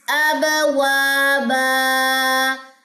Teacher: یہاں پہ ہے جی قلقلہ، با کا قلقلہ، با پہ جزم آ گئی تو قلقلہ ہوگا